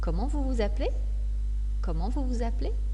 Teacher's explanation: un point d'interrogation l'intonation alors et montantes comment vous vous appelez comment vous vous appelez vous entendez ça monte